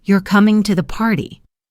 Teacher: where my voice goes up on you? I might be expressing surprise that you specifically are coming.